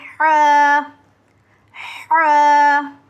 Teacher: ये जो है हमारा ह और आइन, ये दोनों हलक के बीच से अदा होते हैं, तो इसको हम हलक के बीच से कोशिश करेंगे पढ़ने की।